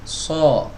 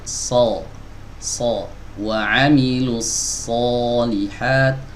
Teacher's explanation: suara vokal yang mirip dengan O itu, ya itu sebenarnya bukan dari dua bibir yang dimajukan